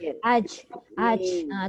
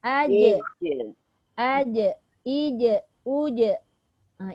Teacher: Bila dia ada satu sifat qalqalah, semasa nak mengqalqalahkan jim itu perlu berhati-hati. Yang dilepaskan itu lantunan suara, bukannya angin.